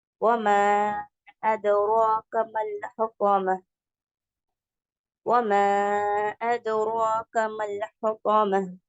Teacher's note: மத்துல் முத்தஅத்தி சொல்லுவாங்க. இது 4 to 5 கோர்ஸ் நம்ம நீட்டணும், ஏன்னா அதுக்கப்புறமா ஹம்சா வந்ததுனால